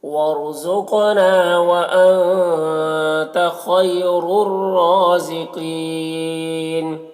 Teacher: قینہ میں قاف کو پر پڑھیں گے، یا مدہ ہے اور نون کا زبر سکون سے بدل جائے گا تو مد عارض وقفی ہوگا